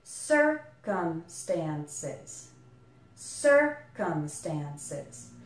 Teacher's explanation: There's a little secondary stress on the stand syllable, so you can think of it like circumstances.